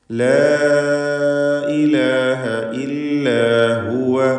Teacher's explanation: 4-5 ഹറക്കത്തിൻ്റെ അളവിൽ അലിഫിനെ ദീർഘിപ്പിക്കുക. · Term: മദ് മുൻഫസിൽ ജായിസ്